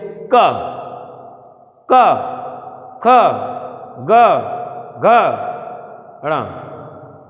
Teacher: कंठ से सीधी ध्वनि उच्चारित होती है और मुख के किसी भी भाग में हलचल नहीं होती है, सिर्फ कंठ से प्रभाव। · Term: कंठ श्रेणी